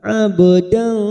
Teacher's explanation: Innahu kana abdan, ka fathah diikuti alif 2 harokat, ba sukun qalqalah sugroh. Karena mati asli tengah kalimat kita pantulkan